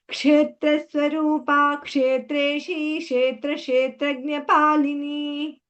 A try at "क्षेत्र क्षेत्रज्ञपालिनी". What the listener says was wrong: Saying kshetra kshetradnyapalini. It's not she. You will get it slowly.